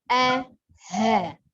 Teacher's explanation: Jadi pengucapan huruf hamzah yang berharokat fathah atau bunyi a dengan ha itu dari tenggorokan bagian bawah ya.